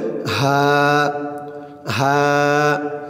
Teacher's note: হার উচ্চারণটা গলার ভিতর থেকে মোটা হয়ে আসবে, বলতে হবে হা, হা।